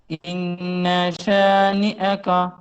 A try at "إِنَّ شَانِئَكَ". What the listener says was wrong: ٹھیک ہے، اور ان کو تھوڑا کم کرو، زبر کو، نون میں غنہ رہے گا لیکن زبر کم ہوگا. ان شانئک.